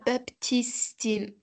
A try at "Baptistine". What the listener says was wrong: Baptistine, on ne prononce pas le P. Baptistine, d'accord.